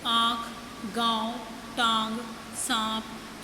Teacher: और इसका प्रयोग स्वरों और व्यंजनों के ऊपर किया जाता है, जैसे आँख, गाँव, टांग, सांप आदि। अनुनासिक का उच्चारण नाक और मुंह से किया जाता है, यानी नाक और मुंह दोनों से किया जाता है